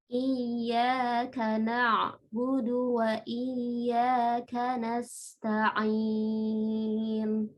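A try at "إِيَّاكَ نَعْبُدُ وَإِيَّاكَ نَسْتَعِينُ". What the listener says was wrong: Ya, itu tadi jangan terputus ya, walaupun dia sukun, tapi langsung ke berikutnya, ke huruf berikutnya. Iyyaka na'budu. Iyyaka na'budu wa iyyaka nasta'in.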